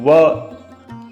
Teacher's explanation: व बोलोगे तो व ओष्ठ भी लगेगा और दांत भी थोड़ा सा स्पर्श होगा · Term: दंतोष्ठम